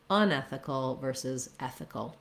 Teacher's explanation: I stressed the un syllable a little more to highlight the contrast between the two words.